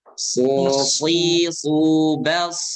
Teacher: so dibaca tebal karena dia punya sifat isti'la dan itbaq. Kalau isti'la dan itbaq ketemu, wah udah itu huruf itu pasti ya pasti tebal. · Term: Sod tebal